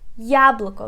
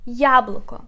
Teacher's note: We put stress on the first syllable.